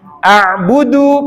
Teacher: jadi Alif ke Ain a'budu pendek saja jangan dipanjangkan